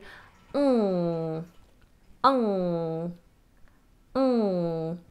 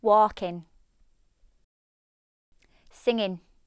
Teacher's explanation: Another feature that you'll hear in many regional accents is the treatment of the ng. In RP, Received Pronunciation, this is sounded with the back of the tongue high, ng. ng ng, like walking, singing.